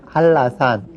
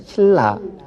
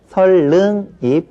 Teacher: 우리말에 그 지난번 맞춤법 시간에 우리가 공부를 했는데 우리말에서는 니은과 리을이 연결되는 것은 아주 꺼려한다라고 말씀을 드렸어요. 그래서 니은과 리을이 연결될 때는 니은을 리을로 바꿔서 발음하는 것이 아주 일반적인 발음 현상입니다. 그래서 한나산이라고 쓰지만 발음할 때는 할라산 이렇게 발음을 하고요.